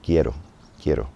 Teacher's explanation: with our more English accent, we tend to stretch those vowels. We don't want to do that. It sounds like quiero.